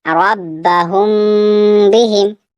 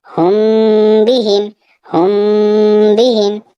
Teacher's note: یعنی میم پر تھوڑا سا رک کر پڑھنا ہے، ہم بہم، ہم بہم۔ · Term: اخفاء شفوی